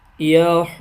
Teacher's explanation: اب یہ ضاد کے اوپر شد والا حرف ہے، وقف کرنا چاہ رہے ہیں تو یہاں شد کر کے وقف کریں گے